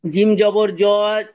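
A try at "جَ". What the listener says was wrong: জবর জ নয়, জিম জবর যা।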